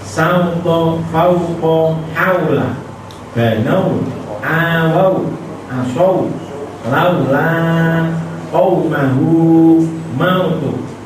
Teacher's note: fathah yang diikuti wawu sukun berbunyi au dan tidak panjang